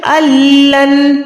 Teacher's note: کیوں؟ کیونکہ نون ساکن کے بعد اگر لام آ جاتا ہے تو ہم اس نون ساکن کو ادا نہیں کرتے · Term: ادغام